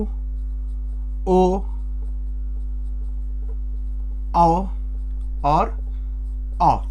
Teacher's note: जब हम इन स्वरों का उच्चारण करेंगे तो हमारा जो होठ है वो सर्कल टाइप में बन जाएगा, मतलब एक वृत्त की तरीके बन जाएगा। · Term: वृत्तमुखी